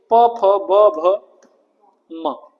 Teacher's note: और प वर्ग कहां से? ओष्ठ से।